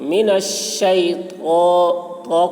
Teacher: منش میں بڑی شین ہے، اس کی آواز سیٹی کی جیسی ہوتی ہے